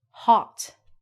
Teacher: if your T is at the end of the word in uh English pronunciation it actually has a fancy name it's called a stopped sound